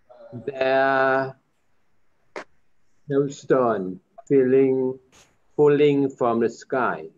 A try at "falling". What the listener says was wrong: Falling ▁น ะ ค รั บ ไ ม่ ใ ช่ ▁feeling ▁falling